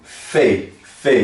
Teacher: Olha, forma-se como os dentes superiores e o lábio inferior. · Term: vei